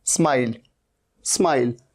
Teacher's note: ये मिस्टेक कई स्टूडेंट्स करते हैं, ई नहीं लगाना है।